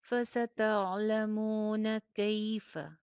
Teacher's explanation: فستعلمون کیف نذیر, فستعلمون، مون، میم کے ساتھ واو مدہ ہے، ہونٹ میکسیمم گول، اور نون کے اوپر صرف زبر ہے، نون کی آواز کو لمبا نہیں ہونے دینا